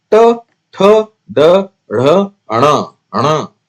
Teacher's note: मूर्धन्य कंठ और तालु के बीच का भाग मूर्धा कहा जाएगा उसको।